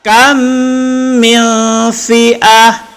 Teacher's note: Jadi ketika kita membaca kam, itu dengung 2 harkat. Min itu ifa hakiki.